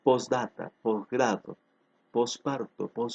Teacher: ya no se pronuncia la t